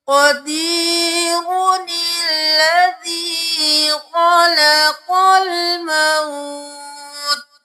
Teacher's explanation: ہم نے الف کو چھوڑ دیا، ہم نے نون کے ساتھ لام کو ملایا کیونکہ لام پر تشدید ہے تو ہم نے الف کو نہیں پڑھا۔